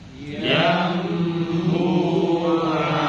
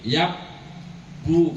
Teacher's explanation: Nah, ketika didengungkan, maka yang muncul suara mim. Jadi merubah suara nun menjadi suara mim dengan didengungkan panjang satu alif. Jadinya yang bu'an dibacanya yang bu'a. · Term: Iqlab